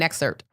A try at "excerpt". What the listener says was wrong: There's a P in that word, just so you know. Everybody.